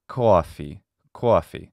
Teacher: typical of a new york traditional accent like instead of coffee it would be koafi and you hear that diphthong more strongly pronounced